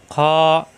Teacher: খ কণ্ঠনীর শেষ অংশ থেকে খ এটাকে বলা হয় স্থিলার হরফ অর্থাৎ মোটা হরফ